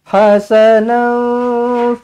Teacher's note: Nau, ikhfa hakiki, dengungkan dua harakat.